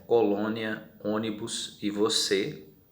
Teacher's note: a vogal tônica possui timbre fechado, como por exemplo colônia, ônibus e você